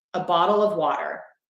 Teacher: I'm using the flap T, which I say is a quick D.